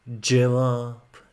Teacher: C'yi değil de kendine has bir c harfi var mesela cevap C yaparken dişlerinin arasına hafif bir dil ucu dokundurarak daha böyle Şıngır Şıngır gelmesini sağlıyor daha parlak gelmesini sağlıyor